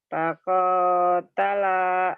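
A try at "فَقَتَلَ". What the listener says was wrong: Yang panjangnya ujungnya doang. Koknya pendek. Koknya pendek. Fakotala.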